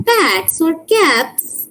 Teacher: But when you were pronouncing bats or caps, you look at your tongue and you will see that you were actually pronouncing S, but not something like Z. So for bats, there is also the S sound.